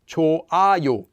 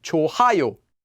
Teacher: the 히읗 (ㅎ) sound will disappear before the consonant 이응 (ㅇ).